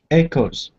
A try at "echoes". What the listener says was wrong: Good. Good. Just like that.